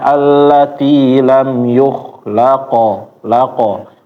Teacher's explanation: kayak ngucapin qo biasa tapi dipendekin ee panjangnya. Qo biasa ini lebih pendek lagi. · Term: qalqalah